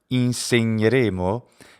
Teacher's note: the gn sound it's nya but it's always geminated when it falls between vowels